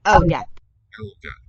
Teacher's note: Nice dark L on that. Unlike Spanish.